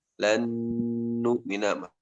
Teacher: Idgham ma'al gunnah berarti harus ada gunnah 2 harokat ya